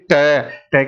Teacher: अगर आप टा की बात करते हैं तो जीभ जब तक मसूड़े पे नहीं जाएगी तब तक वहां से टा का उच्चारण नहीं होगा। तो आप ट की ध्वनि छोड़ते हो जब जीभ को मसूड़े से हटाते हो और बाद में बचता है ए। · तो आप ट की ध्वनि छोड़ते हो जब जीभ को मसूड़े से हटाते हो और बाद में बचता है ए। जैसे कि ट, ट की ध्वनि का उच्चारण उतनी देर रहा जितनी देर आपकी जीभ मसूड़े से अलग हुई थी।